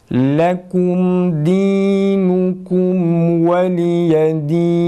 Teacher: dinukum kelimesini hecelerin tane tane okusak daha güzel çıkar. Başta nun harfinin ötresini okuyoruz. Dudak geriye geliyor. Sonra kafta tekrar önde, mimde tekrar geride.